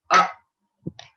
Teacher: The first letter A is one matra kala. One matra kala means one time unit.